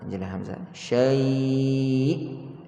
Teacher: Kita kena tinggikan sikit suara kita bila sampai pada hamzah. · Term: an-nabr